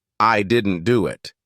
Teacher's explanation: it sounds natural because the stress falls on the word didn't now imagine stressing the wrong words I didn't do it it